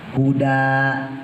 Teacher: Tapi kalau kita wakof kita berhentiin iya panjang 2 harokat